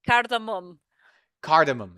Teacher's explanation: It had to be pronounced with like a schwa sound at the end